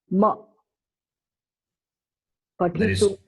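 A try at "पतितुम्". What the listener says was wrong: There is no ma. It is only makara. Only the consonant is there. It is patitum. How it is patituma? Patitum.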